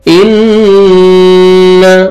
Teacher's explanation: नून मुशद्दद है, गुन्ना करेंगे, नोज में साउंड लेके जाएंगे